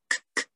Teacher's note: So the K sound is like a regular English language K. It's at the top of the mouth, like k-k-k, with like the middle of your tongue.